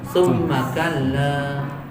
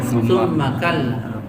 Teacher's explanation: Orang cuma membaca ditekan tapi tidak ditahan. Jadi cuma baca summa kalla gitu.